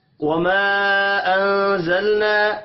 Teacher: الف کے اوپر چھوٹی مد ہے، 3 الف کے برابر کھینچ کر پڑھیں گے۔ انزلنا نون ساکن کے بعد زا ہے، اخفاء حقیقی ہوگا، لام ساکن پر قلقلہ نہیں کرنا، الف مدہ کو ایک الف کے برابر کھینچ کر پڑھیں گے۔